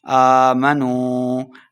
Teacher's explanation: آمنوا الف کے اوپر کھڑی زبر ہے تو 2 حرکات لمبا کر کے پڑھنا ہے